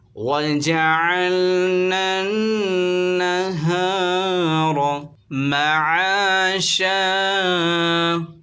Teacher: نون مشدد میں غنّہ ہوگا، غنّے کی مقدار ایک الف کے برابر ہے